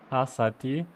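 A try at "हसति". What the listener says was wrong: Yeah, one correction is not T, T soft. It should be soft. The T.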